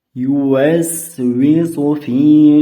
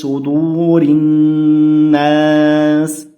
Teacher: s harflar sot harfiga qaraganda ingichkaroq o'qiladi. Sot harfi yo'g'onroq o'qiladi.